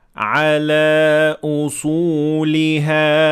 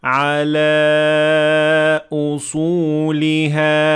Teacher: the word ala ends with an alif, alif maqsura, that can be extended for 2 harakat, and it can be extended for 4 harakat if I choose to. So I may say ala usuliha, and I can also say ala usuliha.